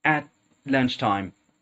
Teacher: I didn't pronounce the T at the end of at